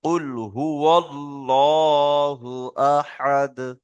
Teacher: আল্লাহ শব্দের আগে যদি জাবার আসে, তাহলে আল্লাহ শব্দকে কি করে পড়তে হবে? পুর করে পড়তে হবে, অর্থাৎ মুখ গোল করে পড়তে হবে।